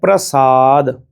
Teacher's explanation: ਸਸੇ ਦੇ ਪੈਰ ਵਿੱਚ ਬਿੰਦੀ ਵਾਲਾ ਉਚਾਰਨ ਨਹੀਂ ਕਰਨਾ ਸਾਧੇ ਸਸੇ ਵਾਲਾ ਉਚਾਰਨ ਕਰਨਾ।